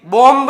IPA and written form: bɒm (Bomb)